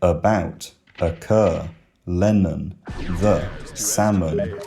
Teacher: It's the most relaxed possible vowel in terms of tongue posture. Uh, you don't have to extend your tongue very forward or back or high or low in order to produce it.